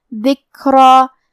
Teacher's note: ذکرا، جو کہ حرف الرا کی حرکت ہے زبر، تو را کا حکم ہے تفخیم اور اس پہ کھڑے زبر بھی ہے، تو یہاں مد الف ہوا، اور مد الف اپنے پیچھے والے حرف کا حکم لیتا ہے تفخیم میں اور ترقیق میں، تو ہم را کو اور مد الف کو دونوں کو بھاری آواز میں پڑھیں گے